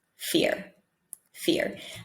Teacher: just with the vowel we know what the word is so in the american accent we just add a tiny 10 percent r with less rounded lips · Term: soft r